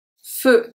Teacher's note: E-U make the sound E, an open E, not a close E